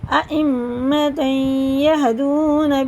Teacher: یا پہ شد ہے اور پیچھے تنوین ہے تو یہ بھی غنہ کر کے پڑھیں گے، ادغام ہوگا